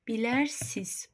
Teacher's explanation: Bilərsiz, bu formada olacaq. Sinizdəki n düşəcək.